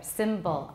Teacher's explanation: from Americans, generally, there will be a schwa there, bull, between the B and the L